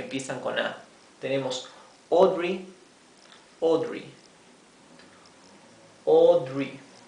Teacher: fíjense esto la a con la u tiene un sonido propio esta combinación de letras a y u se pronuncia o una o profunda